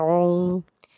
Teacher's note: عین حلق کے درمیان سے اس کو نکالتے ہیں